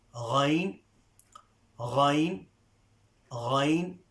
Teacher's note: Now this is from the top of the throat. So this is articulated from the top of the throat, and also it is a full mouth letter.